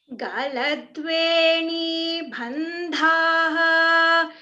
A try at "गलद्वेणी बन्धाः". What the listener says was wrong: Only dha is a mahaprana here, ba is alpa prana.